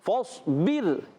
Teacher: را ساکن سے پہلے زیر ہے، را کو باریک پڑھیں گے